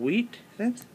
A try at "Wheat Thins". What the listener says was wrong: Why are you putting so much emphasis on the H?